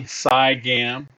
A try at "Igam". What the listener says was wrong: The C is silent. It's IGAM. IGAM.